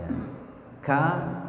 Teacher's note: ada Cup Thor ketika mengucapkan huruf Kaf itu ada nafasnya keluar huruf Kaf itu keluar dari pangkal lidah kemudian sifatnya turun mengeluarkan nafas